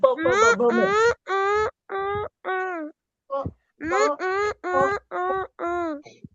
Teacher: प फ ब भ म हे आपल्याला ओठांची मदत घेऊन बोलावे लागतात, म्हणून त्यांना औष्ठ्य वर्ण असं म्हणतात किंवा औष्ठ्य वर्ग असं म्हणतात.